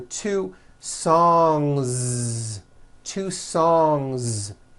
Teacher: a voiced Z ending song ends with a voiced n sound so if you make it plural don't forget to add a voiced Z ending · Two trains with a voiced Z ending. Song ends with a voiced NG sound.